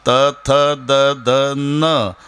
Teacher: नाही इतका बारका त्याच्यात तुम्ही पहा त थ द ध न आता न च्या वेळेला जीभ लागली दाताला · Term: दंत्य